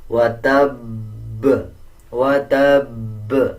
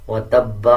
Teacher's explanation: جب اس پہ وقف کیا جائے گا تو زبر کو سائلنٹ کر دیں گے اور با کے اوپر جو شد ہے اس کو مضبوطی کے ساتھ پڑھا جائے گا، جیسے وتب وتب، اور قلقلہ کیا جائے گا۔